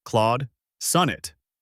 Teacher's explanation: Say the first word cleanly, slight pause. You'll then land the stress on sun.